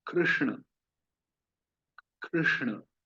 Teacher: ह्री, श और ण, तीनों ही मूर्धा से उच्चारण होते हैं। तो यहाँ जीव हमारी मूर्धा पे स्पर्श होगी। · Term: मूर्धन्य